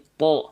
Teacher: itu mengangkat pangkal lidah kita ke arah langit langit-langit ya sehingga karena pangkal lidah kita diangkat maka bunyi vokal a-nya akan berubah menjadi o dari asalnya ta jadi th bibir kita enggak perlu dibulat-bulatkan bibir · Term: istila